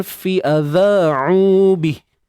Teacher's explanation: adha 2 harakat mat asli, jangan lupa keluar sedikit hujung lidah.